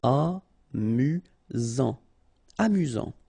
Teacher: You've got only one S here between the vowels, so it's really this Z sound.